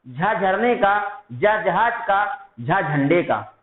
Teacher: बोलने पर कंपन होता है या उच्चारण करने पर कंपन होता है, ऐसे वर्ण घोष वर्ण कहलाते हैं।